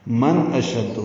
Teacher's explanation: نون ساکن کے بعد حمزہ آنے کی وجہ سے اظہار ہے. اشد، حمزہ کو جلدی سے پڑھیں گے، شین کو دال سے ملائیں گے، دال معروف طریقے سے ادا کریں گے.